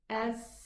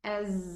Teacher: There is vibration in the vocal cords regarding the letter Z. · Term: jahr